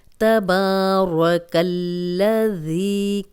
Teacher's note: اب یہاں پہ یہ جو لام ہے یہ ہم باریک ہی پڑھیں گے کیونکہ وہ اللہ اور اللہم کا لام جو ہے وہ موٹا پڑھا جاتا ہے، لیکن یہاں پہ ہم لام کو باریک رکھیں گے لیکن اس کو دو بار پڑھیں گے